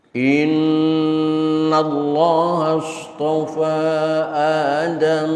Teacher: tasdid di atas huruf nun berlaku hukum gunnah musyaddadah, tahan selama 2 harokat